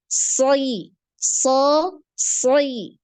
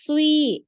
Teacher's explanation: Kalau huruf-huruf yang punya sifat itbaq ini ketika kasroh pun dia tebal ya